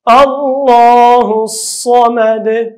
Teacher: صاد په ډک اواز، اخر کې قلقله